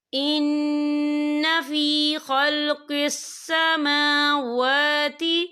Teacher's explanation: کھڑی حرکات ہے، تو ہم اسے 2 یا 3 حرکت کے برابر کھینچ کے پڑھیں گے